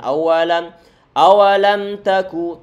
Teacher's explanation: tanpa disertai dengan penahanan suara dengungan karena ini mim sukun bertemu dengan huruf ta, dia termasuk idhar syafawi.